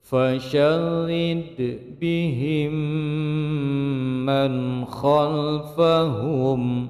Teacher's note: mim sukun bertemu dengan mim idgham mislain atau mutamasilain ma'al gunnah, karena yang bertasdid adalah mim maka dipanjangkan dua ketukan